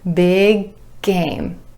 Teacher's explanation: The back of the tongue is coming up for the final G at the end of big, And then releasing into game,